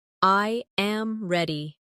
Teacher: Now listen to the difference when I make a statement. I am ready. The voice falls naturally at the end.